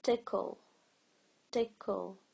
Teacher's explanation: There is a hidden vowel sound between the K and the L. And it's kind of U or schwa. It's usually called schwa.